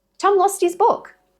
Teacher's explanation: Tom lost his book. Lost is, taking the t at the end of lost, shifting it to the vowel of his